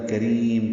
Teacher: کریم کاف را یا میم سب باریک پڑھے جانے والے حروف ہیں ، میم میں اظہار شفوی ہوگا، کریم لمبا کریں گے را